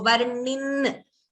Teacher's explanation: you're hearing that n a little twice, doubling of n in the end